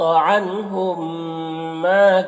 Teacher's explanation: मीम को मीम से मिलाकर गुन्ना के साथ में पढ़ेंगे, इसको इदगाम शफवी कहते हैं। माँ में अलिफ मद्दा है, एक अलिफ के बराबर खींचेंगे।